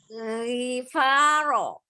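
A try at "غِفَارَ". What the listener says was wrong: Tebal rohnya. Ghifaro. Tidak ro. Ghifaro. Dibuka. Mulutnya dibuka. Ghifaro. Jangan keliru panjang pendeknya ya. Tetap sempurnakan harokat kasrohnya ya.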